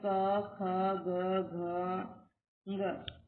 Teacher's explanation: है कंठ कोमल तालू और ध्वनि का नाम है कंठी अर्थात ये सब कंठ से बोले जाने वाले वर्ण है